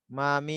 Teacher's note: মিমটা হলো বাহিরের ঠোঁটের শুকনো শুকনা জায়গা থেকে, মানে বাটা হলো ভিতরের সাইড থেকে ঠোঁটের, আর মিমটা হলো বাহিরের সাইড থেকে শুকনা জায়গাটা।